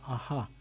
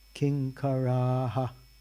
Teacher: The last A is long, and there's a visarga on the H